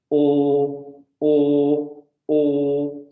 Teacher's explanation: Vean cómo la lengua en la parte de atrás sube y la lengua en la parte de adelante baja. O, y eso es una vocal oral.